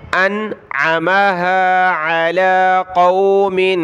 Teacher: پہلے حمزہ کی آواز آئے، نون کے ساتھ ملائیں گے حمزہ کو، پھر عین کی آواز